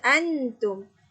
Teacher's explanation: sembunyikan huruf nun itu kita dengungkan